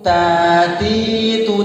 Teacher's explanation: ujung lidah bertemu dengan pangkal gigi seri atas ya. Ujung lidah bertemu dengan pangkal gigi seri atas. Gigi itu yang bagian atas tapi belakang ya.